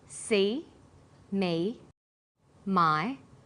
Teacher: High front vowels are E, I, A, Oi. The sounds that are produced with the highest part of the tongue and close to the front of the mouth.